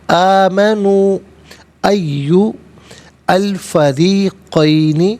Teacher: ایو میں یا پر پیش ہے، اسے الفریقین کی لام ساکن کے ساتھ ملائیں گے، درمیان میں سے الف یعنی حمزہ کو حذف کیا جائے گا۔ فریقین را کے نیچے زیر ہے، را کو باریک کر کے پڑھیں گے۔